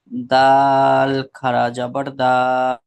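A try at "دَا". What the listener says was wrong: দাল খাড়া যাবার নয়, এটা কি আছে? দাল।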